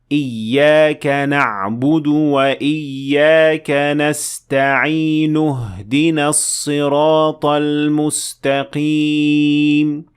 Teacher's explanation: if you keep on reading you do not pronounce the alif at all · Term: hamzat wassel